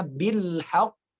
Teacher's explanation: Dia qalqalah kubro dan saat diwakafkan ya diberhentikan bacaannya dia ada tasdidnya. Maka bacanya bil haqq.